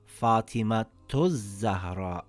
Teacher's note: if I connect the word, it makes a ta sound, and if I don't connect the word, it makes a ha sound.